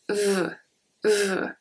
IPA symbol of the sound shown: v